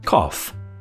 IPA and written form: kɒf (cough)